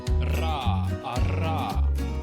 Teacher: Trill. Here an articulator is held in place, and the air blown through the vocal tract causes it to vibrate back and forth.